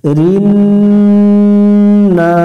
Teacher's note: নুনের উপর তাসদিদ, এই নুনে গুণনা করা ওয়াজিব, বাতি চিহ্ন দেখে গুণনা করে নেব।